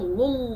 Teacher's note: If you do lul, you cover, there is ghunna. You're gonna sound very nasal.